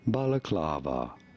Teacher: you do want to stress on the third syllable on the clav syllable